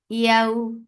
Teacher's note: That is when you are lifting your tongue, middle part of your tongue towards the middle part of your palate, but you are not touching the tongue with that palate. This is what makhraj of ya is, and ya is soft. · This is what makhraj of ya is, and ya is soft. Yaw, and this is lean, so you are making it 2 counts long and make it soft